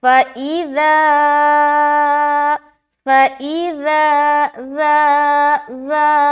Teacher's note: رال اور حرف سا یہ نرمی والا حرف ہے، اس کو نرمی کے ساتھ ادا کرتے ہیں بغیر سیٹی کے۔ اس میں سیٹی والی آواز بالکل نہیں آنی چاہیے ورنہ حرف چینج ہو جائے گا۔